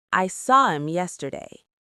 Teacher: In fast speech, him or her often loses the H. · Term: H dropping